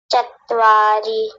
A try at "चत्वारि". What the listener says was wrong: चत्वारी, ऐसा लग रहा है जैसे 2 त बोल रहे हो। चत्वारी, चत्वारी नहीं चतवारी, एक ही तो त है, तकार एक है तो चतवारी।